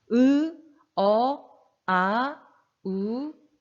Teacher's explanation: 되죠 후설 모음은 요 전설 몸이랑 반 되겠네 그 치유 까는 혀가 뒤로 빠지는 소리 입니다